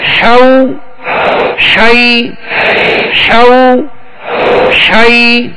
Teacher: ہا کو درمیان حلق سے ادا کریں گے